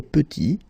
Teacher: Final T is not pronounced,